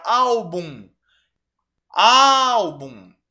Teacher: penúltima sílaba é a tônica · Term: paroxítona